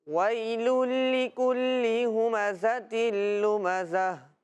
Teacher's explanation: دونوں جگہ انہوں نے ادغام کیا، یعنی تنوین کو لام کے ساتھ ملایا لیکن غنہ نہیں کیا